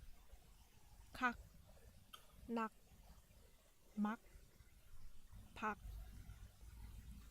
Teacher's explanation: as you can hear it doesn't end with goo sound it's not cog mag pug but you drop the g sound at the end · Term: patsim